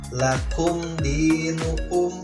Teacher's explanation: ada yang namanya mim mati menghadapi huruf dal ya, berarti izhar juga, jelas juga dibacanya mimnya ya